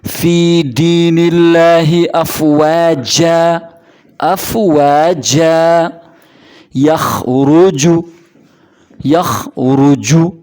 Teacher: جیم ادا ہوتا ہے زبان کا درمیانی حصہ اوپر تالو کے ساتھ لگنے سے